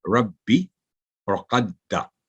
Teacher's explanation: با کی کسرہ یا دال کی فتح کو لمبا پڑھنا غلط ہوگا، کیونکہ با کے نیچے کسرہ ہے تو 1 سیکنڈ صرف، ربی اور قدا، دال پر فتح وہ بھی 1 سیکنڈ۔